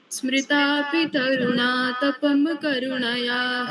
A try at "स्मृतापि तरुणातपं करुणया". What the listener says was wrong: तपम बोल दिया, म पूरा नहीं बोलना है, तपम है ना वो। फिर तपम करुणया कैसे बोल सकती हैं आप? तपम करुणया नहीं बोलना है ना ऐसे। स्मृतापि तरुणा तपम करुणया हरन्ति नृणाम्।